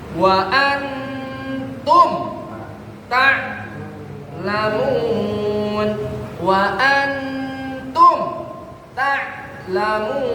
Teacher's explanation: Nah, tumnya jelas tuh, tum. Enggak dengung, enggak guna. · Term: izhar